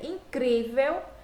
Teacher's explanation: Vejam que aqui eu tenho a última sílaba, penúltima sílaba. E quando eu faço essa pronúncia, incrível, eu vejo que esse cri é a sílaba mais forte · E quando eu faço essa pronúncia, incrível, eu vejo que esse cri é a sílaba mais forte. Então, se a penúltima sílaba, esse véu é a última, cri, a penúltima sílaba, então ela vai ser considerada paroxítona, porque a penúltima é a sílaba mais forte.